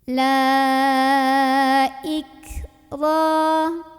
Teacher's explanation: Ro ini dibunyikan secara tafkhim karena ro-nya barisnya di atas. Maka dibacanya tebal dengan cara mengangkat pangkal lidah